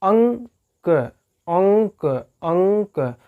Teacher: अंक, अंक, अंक कह रहे हैं तो ज़्यादा सांस नाक से निकल रही है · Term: अनुस्वार